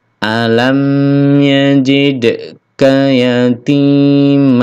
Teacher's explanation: ka pendek ka langsung disambung